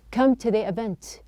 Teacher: it's not a to with a high or a raised sound it's a t it gives you a little bit of a flapping sound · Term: flapped sound